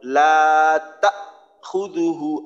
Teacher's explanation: হামজায় যখন জজম হবে তখন কিন্তু শক্তভাবে আটকাইতে হবে, নরম করা যাবে না। নরম, মোটেও নরম করা যাবে না, শক্তভাবে।